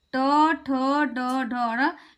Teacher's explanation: जो जिह्वा है वो मुड़ जा रही है, वो मुड़ जा रही है, इसलिए इसको हम बोलते हैं मूर्धन्य।